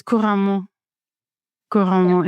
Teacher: It's like every single syllable gets the same emphasis. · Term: syllable emphasis